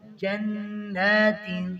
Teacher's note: جنات کھڑی زبر کو ایک الف کے برابر پڑھیں گے